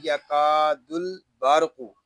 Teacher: اس کو یکادل اس طرح نہیں پڑھیں گے، اس کو پڑھیں گے یکاد البرق۔ را ساکن سے پہلے زبر آ گیا ہے، اس لیے را کو ہم پر پڑھیں گے۔ قاف حروف مستعلیہ میں سے ہے، اس کو بھی پر یعنی موٹا پڑھیں گے۔